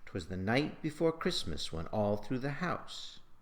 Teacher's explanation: Notice the stress on every third syllable, creating that fast, rollicking rhythm that students like to call flow.